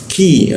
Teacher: lidahnya diturunkan sehingga rung udara terbuka dan ada hembusan udara yang cukup kencang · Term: ada hembusannya